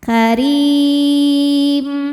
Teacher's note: Huruf ra dibaca secara tarqiq karena berharokat kasrah maka dibacanya tipis. karim. Dan ketika berhenti hukumnya adalah mad arid li sukun.